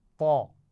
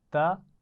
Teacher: طا کی آواز تا کے مقابلے میں موٹی آواز ہے